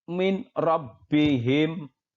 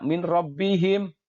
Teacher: dibaca dengan cara memasukkan atau meleburkan nun mati atau tanwin dengan huruf idgham yang ada di depannya tapi tanpa mendengung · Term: idgham bilagunnah